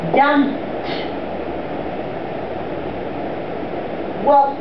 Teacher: the P ending doesn't have a vibration in here, so then it's voiceless.